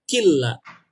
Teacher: bukan dibacanya walakin la, bukan kin la, tapi masuk ke lamnya jadi walakin la yashkurun.